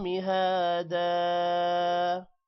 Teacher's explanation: وقف کی وجہ سے 2 زبر ایک زبر میں کنورٹ ہوگا اور الف کے ساتھ مل کر تھوڑا سا لمبا ہوگا